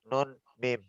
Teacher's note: kita menyebut nun dan mim ini tidak bisa dalam kondisi hidung tertutup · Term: dengung asal